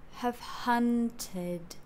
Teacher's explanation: Hun starts higher and then goes lower, but don't go all the way down. I kind of marked this tid as if it's on the middle, it's held for a little bit in the middle.